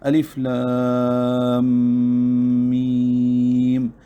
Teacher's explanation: اب اس میں 2 مدیں ہیں، ایک لام پر مد ہے اور ایک میم پر مد ہے۔ جب ہم الف لام میم پڑھتے ہیں تو لام پر جو مد ہے یہ مد لازم حرفی مثقل ہے کیونکہ آگے میم مشدد آ رہا ہے